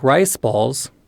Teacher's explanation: in some words like rice balls this downstep occurs almost immediately